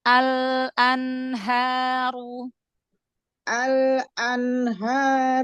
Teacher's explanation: Jangan ada jeda dari lam sukun ke hamzanya.